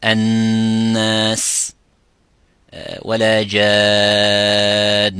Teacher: Then you would say that any noon sakina or mim sakina as well has a shadda, such as الناس ولا جان. Nun with the shadda, mim with the shadda, this is the highest ghunna it could be, which is 2 counts.